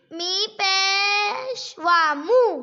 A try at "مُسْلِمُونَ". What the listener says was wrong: واو کو لمبا کرو نا میم پیش وامو